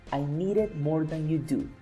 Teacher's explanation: Here we're going to pay attention to the consonant sound, which is D. But this D is in between a vowel and another vowel. That's why this one is pronounced as an R.